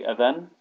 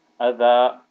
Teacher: if you're reading it without stopping, it will be adhan, but when you stop on it, it will turn into adha.